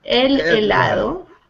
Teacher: Yeah, the H is silent.